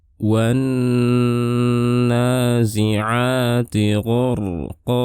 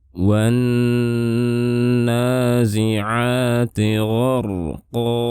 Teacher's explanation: Ini disebut dengan alif lam syamsiyah. Jadi alif lamnya tidak dibaca, namun kita langsung membaca huruf yang berada setelahnya. Dan di sini hurufnya adalah huruf nun. · Dan nun saat bertasydid kita harus menahan suaranya, jadi tidak langsung pindah dari pindah ke huruf setelah nun. Ditahan suaranya dengan gunnah yang panjang. · Kemudian kita lihat di sini harokatnya. Kita bisa melihat ada fathah berdiri. Ini maksudnya adalah mad tabi'i, dibaca 2 harokat.